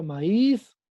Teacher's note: es una palabra aguda porque su sílaba tónica está en la última posición